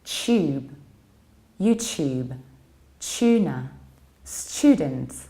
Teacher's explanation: in British accents, we tend to palatalize T and we pronounce the word like tube, YouTube, tuna, student.